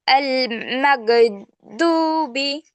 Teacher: হলকের শেষ ভাগ হইতে গইন